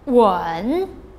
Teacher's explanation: the third tone the falling rising tone